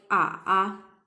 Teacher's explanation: we can see that third tone is going down and then going upside right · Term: full third tone